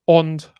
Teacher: something in sort of halfway between an O and an a when you have a nasal following so on low low back rounded is how it's usually interpreted